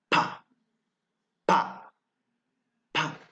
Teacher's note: The lips are closed to create a block in the mouth. · The point of articulation is bilabial. The way of articulation is plosive.